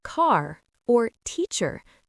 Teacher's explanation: In American English, the R sound is often pronounced strongly, even at the end of words. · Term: American R sound